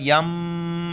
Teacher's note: نون ساکن کے بعد با آ رہا ہے تو نون بالکل ختم ہو گیا میم کو پڑھیں گے